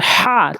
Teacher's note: হা উচ্চারণ করবেন হলকের মাঝখান থেকে হলকের মাঝখান থেকে চাপ দিয়ে হাতের তালু মুখের সাথে লাগিয়ে দেখবেন হা উচ্চারণ করার সময় গরম